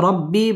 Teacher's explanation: রব্বি বা তাসদীদ ওয়ালা হরফ এবং র পুর হবে